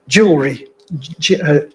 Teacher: an unstressed vowel is deleted in the middle of a word, and as a result, the consonants clash together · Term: syncopated